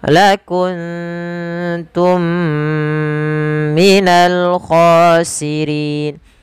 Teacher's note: ada mim mati bertemu mim lagi, kita hukumi dengan idgham mimi. Cara membacanya ditahan suara nya sepanjang 2 harakat.